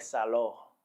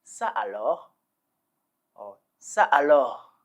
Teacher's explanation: you have to leave a short pause a tiny pose in between the two different words so you